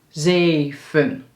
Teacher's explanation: De eerste is een [EE] de tweede is een [U]